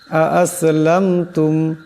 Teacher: আ'আসলামতুম, এখানে মিম সাকিন আছে, কিন্তু গুণ্য করা যাবে না